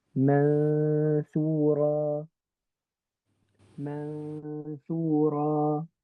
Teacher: Right, I know that we're going to do ikhfa, so I'm going to hide the n component of my noon, but I'm going to pronounce the ghunna component. So it's going to sound like mansura, mansura.